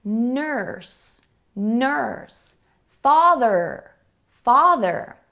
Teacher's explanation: This is an ER sound, which is also called in many cases an R-colored vowel, because we have vowels like U that actually sound like an ER.